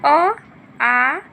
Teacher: अ, आ का उच्चारण स्थान जो होता है वो कंठ से होता है